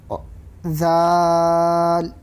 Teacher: زبان کی نوک کو سامنے کے دو دانتوں کے کنارے کو لگانے سے ذال ادا ہوتا ہے